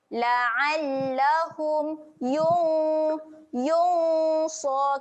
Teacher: Kat sini ada bacaan dengung. Dengung yang sedia nak sebut huruf sod. Jadi kita dengung tu dekat tengah-tengah lidah tu. Lidah tu tak perlu angkat lah. Sebab huruf sod makhrajnya hujung lidah pergi cucuk dekat belakang gigi bawah kan.